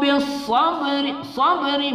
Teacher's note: ba berbaris sukun kita baca qalqalah ya, qalqalah sughra